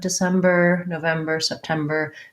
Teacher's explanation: the end because the bur is short and unstressed as well in american english i still need to make my r sound at the end of december november september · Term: tight american er